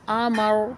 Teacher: حمزہ زبر آ، میم زبر ما، آما، را زبر را، آمارا، وقت کی صورت میں آمر، را پر پڑھیں گے، را پر حروف میں سے ہے اس لیے یہ پر یعنی موٹی پڑھی جائے گی، اور وقت کی صورت میں را بھی ساکن ہو جائے گی۔